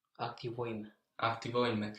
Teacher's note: But if we think about sounds, N and M, N, they're very close, so it would be quite hassle to change between these two sounds in this case. So the N changes to M. So instead we have two M's there.